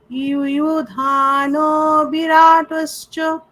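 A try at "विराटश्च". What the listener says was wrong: বিরাটশ্চ হয়ে যাচ্ছে, ওটা স্পষ্ট টাশ্চ আকার। হ্যাঁ, বিরাটশ্চ, ইউধানো বিরাটশ্চ।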